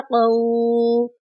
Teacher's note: یہاں پر قاف کو موٹا پڑھیں گے اور واو ساکن ہے، واو ساکن سے پہلے قاف کے اوپر زبر ہے، تو یہ واو واولین کی مثال ہے، اس کو نرمی سے پڑھیں گے۔